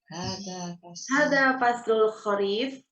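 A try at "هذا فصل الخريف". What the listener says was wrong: Jamil, tapi bukan intonasi pertanyaan ini mah. Hadza. Hadza faslul kharif.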